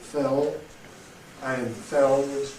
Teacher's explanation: in a word like fell, we have a long L, fell, and felled, similarly long because of the D, which is voiced